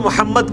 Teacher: اب یہاں پہ رکیں گے تو محمد کر کے دال پہ غلغلہ ہو جائے گا, اور آگے ملائیں گے تو یہ ہوگا محمدیوں وعلی آل محمد.